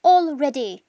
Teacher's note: la forma en que se pronuncia already, con una O al principio, all, luego ready